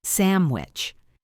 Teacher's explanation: The N turns into an M because of the W sound, which uses lips. This is subtle, and you do not have to force it as it happens naturally if you are speaking fluidly.